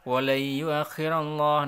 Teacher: nun sukun bertemu ya disebut idgham bi gunnah dibaca dengung dan langsung masuk ke ya